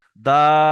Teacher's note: তিন আলিফ টান দিচ্ছি কিন্তু টানটা মধ্যখানে হবে